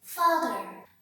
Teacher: your tongue's position is as far away as possible from the roof of your mouth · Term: open vowel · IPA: /a:/